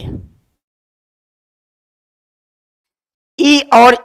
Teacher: ई और ई बोलते समय आपकी जीभ कंठ से थोड़ा ऊपर लगती है तो उसे कहते हैं तालु या तालव्य